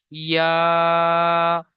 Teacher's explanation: এক আলিফ পরিমাণ টান দিয়ে পড়তে হবে। যেমন ইয়া এটাকে বলবেন ইয়া নিচে এক লেখা রয়েছে।